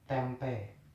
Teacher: Bunyi vokal E adalah bunyi vokal depan tengah tak bundar.